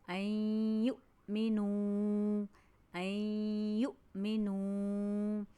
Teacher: اس لفظ کو ادا کرتے ہوئے ہمیں اس بات کا خیال رکھنا ہے کہ یہ حمزہ ساکن کو ہم جھٹکے سے پڑھیں گے